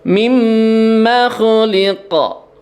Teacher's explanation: Mim itu gunnah ya. Gunnah ditahan ya, 3 ketukan, tidak dibaca tergesa-gesa. Mimma khuliqa ya, qalqalah kubra ya.